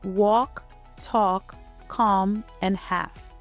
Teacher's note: There is no L sound here. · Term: Silent L